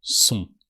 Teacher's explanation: You have the sound on. O and then an N that transforms the O into a more nasal sound. So you hear sont.